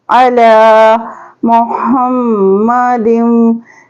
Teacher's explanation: आइन के ऊपर ज़बर है तो खींचेंगे नहीं आइन को, लाम के ऊपर खड़ा ज़बर है, एक अलिफ के बराबर सिर्फ खींचेंगे।